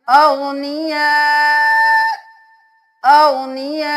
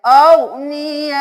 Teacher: यहाँ पे अगनिया नहीं करना, ठीक है। जोर से झटका नहीं देना, हल्की सी हमजा की आवाज आए